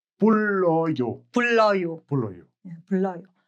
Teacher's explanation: When two r meet, one in the bachim and one as the initial consonant of the next syllable, they both are pronounced as l.